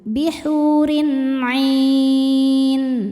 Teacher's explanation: Maka ainnya panjang. Boleh dua atau empat atau enam harakat. · Mad tabi'inya ya sukun yang didahului kasrah, huruf yang disukunkannya nun. Maka ainnya panjang, boleh 2 atau 4 atau 6 harokat asal konsisten dalam sekali duduk. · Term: mad arid lukun, mad arid li sukun